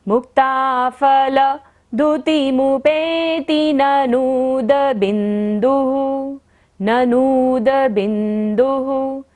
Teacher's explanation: ननूद को लंबा लेना है क्योंकि न के ऊपर बड़े की मात्रा है। और बिंदुः, बिंदु पर विसर्ग है तो ओह करते हुए।